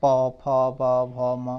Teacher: फिर ओष्ठ से, ओष्ठ में पावर्ग आता है, पावर्ग में क्या आता है, सारे ओष्ठ को स्पर्श करते हैं, प, फ, ब, भ, म, ये सब ओष्ठ को स्पर्श कर रहे हैं